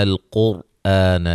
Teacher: قوف کو موٹا ادا کریں گے تو را جو ہے یہ وقفاً وصلاً باریک پڑی جائے گی۔